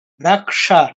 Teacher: ক, ক এর সাথে মূর্ধন্য ষ যুক্ত হয়েছে, কটা আগে, মূর্ধন্য শটা পরে। উচ্চারণের ক্ষেত্রে ক দিয়ে ধরবো, মূর্ধন্য ষ দিয়ে ছাড়বো।